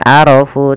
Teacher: Ro-nya tebal, bukan arafu tapi arafu, karena dia ro berharakat fathah maka dia tebal